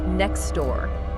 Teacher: Said quickly that t in next often vanishes. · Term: dropping a sound